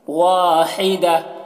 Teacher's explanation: اس ہا کی آواز ہوا کے ساتھ میں نکلتی ہے